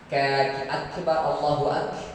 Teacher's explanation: Tidak pakai angin karena sifatnya tidak ada angin di dalam huruf qaf kecuali kaf.